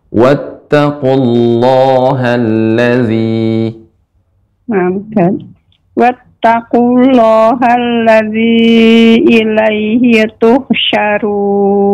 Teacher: ketika membaca wattaqu memang di sini ada mad namun tidak dibaca panjang